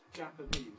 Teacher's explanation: We cannot tolerate two unstressed syllables in the citation form of a word at the beginning. So we have another stress, secondary stress if you like, on the Jap syllable.